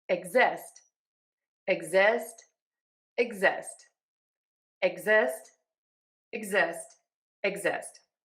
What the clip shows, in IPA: ɪgˈzɪst